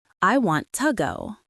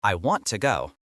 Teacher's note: in daily life, to becomes a ghost. It becomes ta, or sometimes even just duh. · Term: ghost version of to